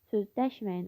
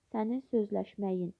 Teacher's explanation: İnkar formasında olanda vurğu ikinci hecada, məsdər formasında olanda vurğu sonda olur. Yəni nəticədə hər iki belə deyək, mənada da vurğu üçüncü hecada olmur və d səsi hər ikisinə d səsi olur.